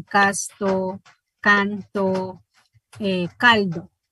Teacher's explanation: Por eso es que N, S y L se dentalizan cuando están antes de T y D, ¿verdad?